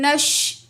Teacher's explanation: نون زبر شین نش، الف لام کو نہیں پڑھیں گے